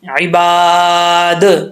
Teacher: دال میں قلقلہ آئے گا، دال کی آواز آئے گی